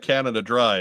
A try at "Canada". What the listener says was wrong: That's 2 syllables also, by the way. Canada. Canada. Canada.